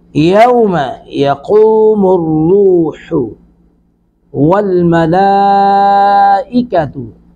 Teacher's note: लाम पर मद्दे मुत्तसिल 3 अलिफ खींचेंगे